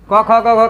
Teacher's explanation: अब बोलो ये पांचों वर्ग को याद करने में कोई दिक्कत? क से कंठ, क ख ग घ का उच्चारण कंठ हो गया।